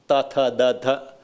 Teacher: So your tongue touches the teeth.